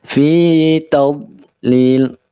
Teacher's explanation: Ya, bacaan lin, kaidahum. Fi-nya 2 harokat saja, ya, jangan sampai terlalu panjang.